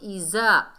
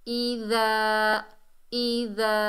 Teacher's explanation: ज़बान की नोक को ऊपर वाले दांतों के किनारे से लगाएंगे तो इसमें नरमी पैदा होगी। और आगे देखिए अलिफ खाली से पहले ज़बर है, ये अलिफ मद्दा है, एक अलिफ की मिकदार खींच कर पढ़ेंगे।